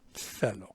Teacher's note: it's just wind coming between your tongue and your teeth.